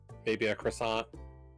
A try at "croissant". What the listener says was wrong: Croissant is French. You don't pronounce the R like that.